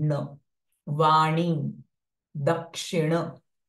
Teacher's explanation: So this is again a peculiar sound in Sanskritam. It is not N but it is nasalized n sound.